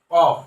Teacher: এই কফ হরফটা জিহ্বার গোড়া উপরের তালুর সাথে লাগিয়ে উচ্চারিত হয়